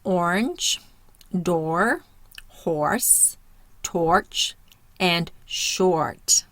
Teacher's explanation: Next we have the backward C with a colon, and this is another R controlled for the vowel O. So we're hearing or. Mouth is rounded